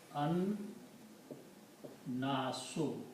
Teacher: it becomes Al n okay in the T in the pronunciation we do not pronounce lamb but pronounce noon twice